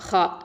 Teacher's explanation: ஹா அப்படிங்கிறது வந்து அதனால் ஹல்கு மேல் தொண்டையிலேருந்து வரணும்.